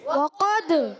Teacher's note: قاف کا مخرج زبان کی جڑ تالو کا نرم حصہ. وقد، تال ساکن ہے، کلکلا ہوگا، آواز لوڈ کرائے گی